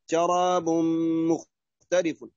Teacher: شراب تنوين بعده ميم إضغام